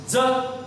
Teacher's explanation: ज या वर्णाचा उच्चार करताना फुफ्फुसातील हवा ही बाहेर टाकल्या जात नाही म्हणून हा महाप्राण नाही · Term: अल्प प्राण